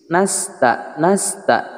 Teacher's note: sin tipis, nasta, nasta, tidak nasta, artinya tidak menggunakan punggung lidah. Nasta tidak boleh, tapi menggunakan ujung lidah.